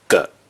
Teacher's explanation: When it is used as a measure word, it is pronounced with the neutral tone “ge”.